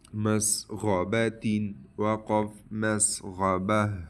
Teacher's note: یہ گولتا وقف کی حالت میں یہ ہا پر بدلے گا